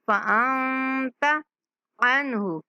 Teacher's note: فَأَنتَ نون پر اخفا کریں گے اور تا کو نہیں کھینچیں گے ، فَأَنتَ عَنْهُ، عنہ اس نون پر اخفا نہیں کریں گے،